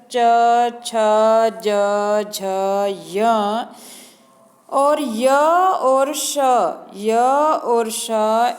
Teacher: च छ ज झ य और य और श इनका उच्चारण स्थान तालव्यः तालु है